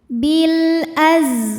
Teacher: Maka ini lam sukun kita bunyikan dengan jelas atau disebut dengan izhar qamari.